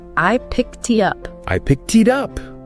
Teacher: there's linking between picked and it and then again between it and up you got it it's like a chain reaction of smooth sounds